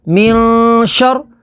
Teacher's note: واو زبر وا، میم نون زیر من، ومن، شین را زبر شر، من شر. نون ساکن کے بعد شین ہے، شین حروف اخفا میں سے، تو یہاں پر اخفا کریں گے